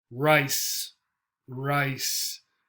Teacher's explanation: you can feel your tongue curling up in your mouth like this, not coming close to your teeth like this.